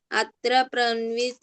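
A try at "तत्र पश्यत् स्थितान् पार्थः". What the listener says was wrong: అత్తర కాదు, తత్ర. పన్వ కాదు, పశ్య. పశ్య అక్కడ శ్యా ఉంది కదా, పశ్య చెప్పు. పశ్య. పశ్యత్ స్థితాన్.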